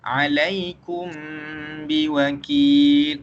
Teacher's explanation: kita sembunyikan huruf mim tersebut dan kita masukkan ke dalam huruf ba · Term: ikhfa